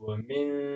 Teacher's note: که چیرې دلته د شین په ځای حلقي توری راغلی وای نو دلته موږ بیا اظهار کولو، یعنې بیا مې ویلی شوه چې ومن، اما اوس ومن نشي ویلی. اوس باید ووایو چې ومن اخفا وکړو، د پوزې څخه اواز راوباسو